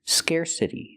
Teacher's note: We hear the T pronounced like a fast D because it's between vowels.